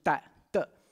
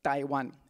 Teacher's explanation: when it gets translated into Mandarin, we add the aspiration T. So it's actually originally Da, Da, Taiwan.